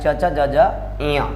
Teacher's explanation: च वर्ग का उच्चारण स्थान तालु होता है